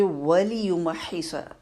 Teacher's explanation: ٹھیک ہے، ایسا نہیں ہو اس کو کم ٹائم دے اور پھر زیر پہ فوراً آ جائے. پہلے مشدد ہا میں ساکن جو ہا ادا کریں گے اس کو ٹائم دیں گے، پھر ہا کی زیر کو پڑھیں گے. اور ہا کا مخرج کلیئر ہونا چاہیے، ایسا نہیں ہے وہ دوسرا والا ہا بن جائے.